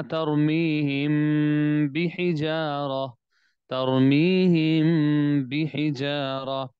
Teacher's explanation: اب یہاں پر دیکھیں کہ یہاں پر میم ساکن ہے اور میم ساکن کے بعد یہاں پر با آ گیا، تو ہم یہ کہیں گے کہ یہ میم ساکن کا اخفاء ہے کہ یہاں پر غنہ بھی کرنا ہے اور آواز ناک میں جا رہی ہے